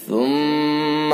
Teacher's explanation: ثا کو نرمی کے ساتھ، میم کے اندر غنہ